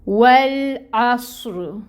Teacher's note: عین کو آپ نے وسط حلق سے نکالنا ہے اور صاد کو آپ نے پر کرنا ہے، اس میں سٹی کی آواز لے کے آنی ہے، را کو پر کرنا ہے، لام کو ہلانا نہیں ہے، واؤ پہ اپنے ہونٹ گول کرنے ہیں۔